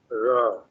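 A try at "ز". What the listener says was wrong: জ র না জ এইটা এগুলা জ জ জ স্ক্রিন শেয়ার দেখাই জ জ জিহ্বার আগা জিহ্বার আগা জিহ্বার আগা এই আগা সামনের উপর দুই দাঁতের আগা উপরের উপর দুই দাঁতের আগার সঙ্গে র যা, যা, ত, য, যা, যা, যা, যা, যা যাব, যা যাব, যা, যা যে জি, যা পেশ জু, যা,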